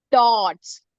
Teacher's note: We are not sounding the O as O. We are pronouncing the sound as ah.